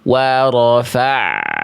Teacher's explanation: Jangan dihentak bunyi ainnya, Bunda, tapi diantar, ya. Diantar sampai menyongsong huruf setelah ain sukunnya. · suara dari ain sukun itu seharusnya sedikit mengalir. Jangan sampai betul-betul terputus